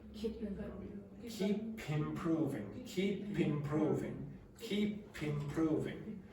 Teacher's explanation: the last sound or phoneme in the word ends in a consonant, and then the next word begins with the vowel sound